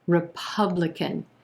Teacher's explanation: four syllables here with our emphasis on the second syllable and the ah as in plum vowel sound republican we've got